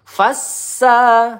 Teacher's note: Sin bertasdid fassa kita tekan sa panjang satu ayunan.